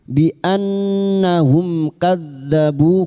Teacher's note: mim sukun bertemu kaf idhar safawi, mim sukun dibaca jelas tanpa mendengung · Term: idhar syafawi